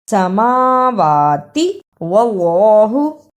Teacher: جس اللہ سے پہلے زبر یا پیش ہو اسے پر یعنی موٹا پڑھتے ہیں